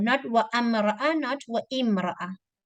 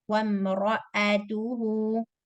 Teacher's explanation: Do not pronounce Hamza. Ignore it. It's not there. It's like it's not there. Connect wow with meme. Ra heavy. Wamra'atuhu.